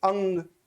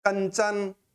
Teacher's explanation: अनुस्वार का उच्चारण हमारा नासिका के माध्यम से किया जाता है, क्योंकि जो प्राण वायु निकलती है मुख के साथ साथ नासिक छिद्रों से भी होते हुए बाहर निकलती है। आप किसी भी प्रकार के वर्ण को बोलोगे तो नाक पर जोर आएगा और कुछ प्राण वायु का भाग नाक की ओर जाएगा।